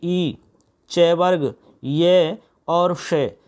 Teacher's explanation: इन सभी वर्णों का उच्चारण स्थान आपका तालु होता है